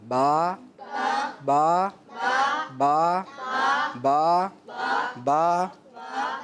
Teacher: با ادا ہوتا ہے دونوں ہونٹوں کے تر حصے سے. گیلا گیلا جو ہوتا ہے نا, یہ ہمارے ہونٹ ہے.